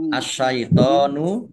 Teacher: alif lam syamsiah karena tidak dibaca langsung masuk ke huruf berikut nya yaitu syin · dibaca langsung masuk ke huruf berikut nya yaitu syin Sin ditandai syinnya ada tasdidnya syinnya dibaca dobel